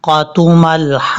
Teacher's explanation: لام کے بعد جو ہا ہے یہ ہا بریک ہے، اس کو بھاری ساؤنڈ کے ساتھ نہیں پڑھنا، اور ہا کے آگے الف ہے، الف کے اوپر مد ہے، یہاں پر الف کو لمبا کر کے قاف کے ساتھ جو ہے وہ ہا کو کنیکٹ کرنا ہے۔